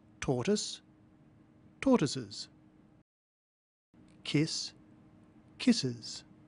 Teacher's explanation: notice that the final s is pronounced Z